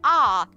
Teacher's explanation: When you say ah, your jaw drops, and that sound is more toward the back of your mouth. So as soon as that placement changes, you've changed the sound. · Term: ah phoneme